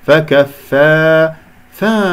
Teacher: مخرج الفاء ضعيف يحتاج الى هواء وصوت حتى اسمع صوت الفاء